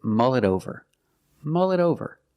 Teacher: The T in it is pronounced as a fast D